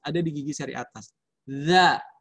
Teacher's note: Kuncinya adalah di ujung lidah dan diletakkan di gigi seri atas. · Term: huruf zal